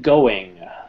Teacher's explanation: i think most people generally say it going with a very very soft g